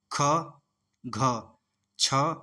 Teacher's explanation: महाप्राण वे ध्वनियां हैं जिनके उच्चारण में मुख से निकलने वाली वायु की मात्रा अपेक्षाकृत अधिक होती है। वह महाप्राण व्यंजन कहलाते हैं।